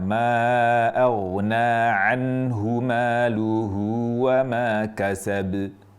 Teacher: bunyi qalqalah yang terjadi di huruf yang kita wakafkan. Jadi kalau kita berhenti di huruf qalqalah maka kita sukunkan dan itu menjadi qalqalah kubra.